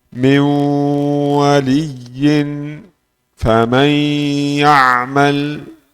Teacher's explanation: Apa idgham naqis ini? Nun masuk dalam ya dan waw.